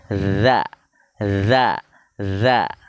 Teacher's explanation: kalau dza itu ujung lidah bertemu ujung gigi seri atas